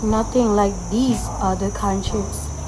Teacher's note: the original accent emphasized the nothing more heavily and use a slightly rising tone on countries suggesting a bit of emotional charge or defiance.